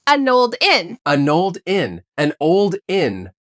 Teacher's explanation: The N from an connects to the O in old. The ed from old connects to the I in inn. It sounds like an old inn. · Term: linked sounds